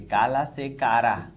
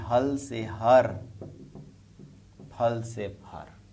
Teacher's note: फिर देखें दोस्तों, तीनों बोलियों में ल ध्वनि र में बदल गई, तीनों में।